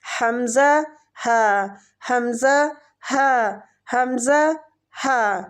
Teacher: اقصی الحلق، یعنی حلق کا آخری حصہ جو سینے کی طرف ہے، یہاں سے 2 حروف ادا ہوتے ہیں